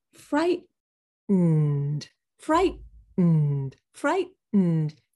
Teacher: You stop the T. Fright. And then you go through your nose for the next syllable. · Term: Hold the T